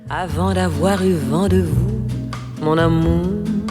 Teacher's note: Mais si vous dites « Avant d'avoir eu vent de vous, mon amour », ça vibre tout le temps, voyelle et consonne sonore